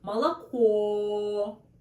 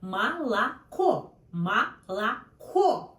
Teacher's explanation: The last one stressed, and this is really clear O sound. Молоко. But see, These two O, first and second, sounds like A, no O.